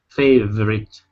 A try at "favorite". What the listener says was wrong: Okay, watch your R. Watch your R, not a hard R sound. Your R wasn't really hard. You weren't saying favorite, okay, but it's favor, favorite. We don't want to put emphasis on that sound though, right here. Okay, so the O is gone. We don't pronounce that at all. So it's favorite, favorite.